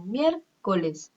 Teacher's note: Por ejemplo, yo digo miércoles. Mier va a ser tónica, co y les va a ser átona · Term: sílaba tónica